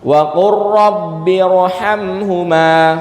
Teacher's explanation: Kalau lam sukunnya bertemu lam atau lam sukunnya bertemu ra, maka lamnya diidghamkan ke huruf setelahnya menjadi huruf satu yang bertasydid